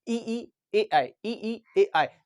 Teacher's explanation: जब भी आप इनका उच्चारण करोगे तो आपका अग्र वाला यानी कि आगे वाले जीभ का हिस्सा कार्य करेगा। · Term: अग्र स्वर